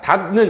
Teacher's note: 자, 이 디귿이 치조음이고 파열음인데 뒤에 니은이라는 비음을 만나서 비음이 됐어요.